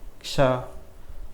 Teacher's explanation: अब क्ष जब हम बोलते हैं किस किस की आवाज़ आती है? क और श की। तो क और श इनसे मिलकर बनता है क्ष। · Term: संयुक्त वर्ण